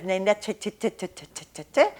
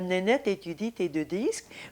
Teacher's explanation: with the firm closure against the upper teeth you have less air